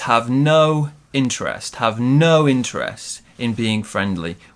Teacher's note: we stress the word no